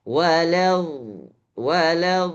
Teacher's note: keluarnya bukan ujung lidah tapi pangkal daripada lidah sebelah kanan atau sebelah kiri